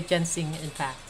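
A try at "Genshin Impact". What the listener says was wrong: Genshin? It's not Ginseng Impact. Ginseng is like a root that Asian people drink for like eternal life. Genshin is this game.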